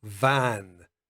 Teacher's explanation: the position of your mouth will be exactly the same as you do for an f but you use your vocal chords